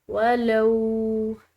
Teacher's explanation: لام کے بعد واو ساکن آ رہی ہے، ایک الف کے برابر اس کو کھنچاؤ دیں گے